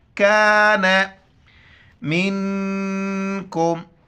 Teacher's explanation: نون ساکن ہے، اخفا مال غنہ کریں گے اور کاف کو چھوٹا کر کے پڑھیں گے